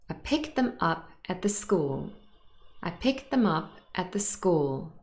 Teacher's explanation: The words that are stressed are picked up and school. Those carry content and information.